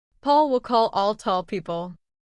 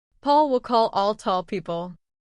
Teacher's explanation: Do you hear that deeper sound at the end of each word? That's the dark L.